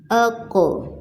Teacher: تو اس کے ساتھ ہم ملاتے ہیں آ وائس کو، حمزہ زبر قوف اق، اق، اق نہیں، پلٹ کر آواز اق، اق۔ میری آواز کو نوٹ کریں کہ وہ سٹاپ نہیں ہو رہی ہے بلکہ وہ پلٹ کر پھر آتی ہے، اق۔ اور ایک اور بات قلقلہ کے بارے میں کہ نہ ہم ان کو جھٹکا دے کر پڑھیں گے، نہ جلدی سے پڑھیں گے، نہ کھینچ کر پڑھیں گے، بلکہ ان کو نرمی سے ادا کرنا ہے، اق۔